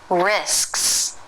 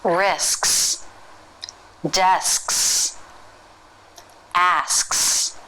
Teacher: the front of the tongue is in position for the s then the back of the tongue lifts and that cuts off the airflow and it touches the soft palate